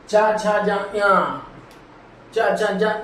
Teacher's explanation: इन्हें बोलते समय जो जीभ है ना वो तालू पे लगती है ऊपर मुंह के ऊपर छत पे छूती है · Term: तालब